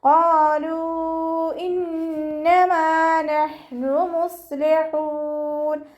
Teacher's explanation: ഹ വസത്തുൽ ഹൽക്കാണ് മഖ്റജ്, തൊണ്ടയുടെ മധ്യഭാഗം. അതിൻ്റെ സൗണ്ട് ക്ലിയർ ആക്കിയിട്ട് തന്നെ ഉച്ചരിക്കാൻ ശ്രദ്ധിക്കുക.